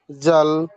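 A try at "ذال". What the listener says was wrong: জাল না, এই যে আস্তে হোল্ড। এই শব্দটা একটু খেয়াল করতে হবে। ওই যে দুই সামনের যে দুই পাশের দাঁত আছে, ওই দুই পাশের দাঁতের মাঝখান দিয়ে একটু জিহ্বাটা বের হবে। দাল, এইভাবে উচ্চারণ করতে হবে।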